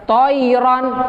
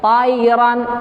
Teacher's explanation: Jadi bukan toiron, tapi tairon, agak sedikit turun ya. Mirip-mirip a, tapi dekat ke o juga. Jadi antara o dengan a.